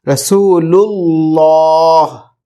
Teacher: اللہ جو ورڈ ہے اس کا لام ہے موٹا پڑھیں گے کیونکہ اس سے پہلے پیش ہے